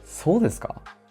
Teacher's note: With rising intonation, it can sound like a question.